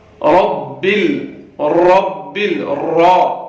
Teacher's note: رب، یہاں پہ را کو موٹا کر کے پڑھنا ہے، کیونکہ را کے اوپر زبر ہے، را کے اوپر جب بھی زبر آئے اس کو موٹا کر کے پڑھا جاتا ہے